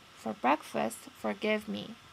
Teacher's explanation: So we can notice that brek was stressed and give was stressed. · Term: Amphibrach